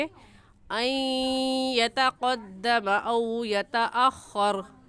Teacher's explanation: इस नून साकिन पर गुन्ना करेंगे, क्योंकि नून साकिन के बाद हरूफ यरमलून में से या आ गया है, तो गुन्ना करने के साथ साथ इदगाम भी करेंगे। और इदगाम कैसे होगा कि इसे अन नहीं पढ़ेंगे, बल्कि अन यतक़द्दम औ यतअख़र ऐसे पढ़ेंगे।